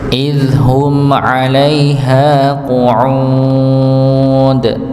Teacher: Idhum 'alaiha juga sama seperti awal yaumi tadi, ya sukun sebelumnya fathah maka tidak dipanjangkan ya, hanya dipanjangkan 2 harakat. Qu'ud dipanjangkan pada ainnya, panjangkan sampai bisa 2, 4, 6 harakat